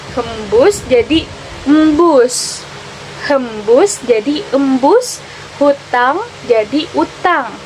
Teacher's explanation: Yang pertama, aperesis adalah proses penghilangan satu ponem atau lebih pada awal kata